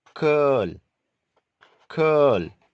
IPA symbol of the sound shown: kɜl